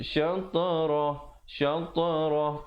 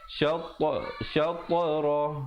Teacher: ta merupakan qalqalah, berikan pantulan dan bulatkan mulut, jangan pepeskan